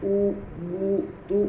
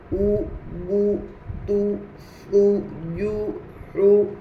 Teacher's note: پیش کی آواز آگے کو جاتی ہے اور ہونٹ گول ہوتے ہیں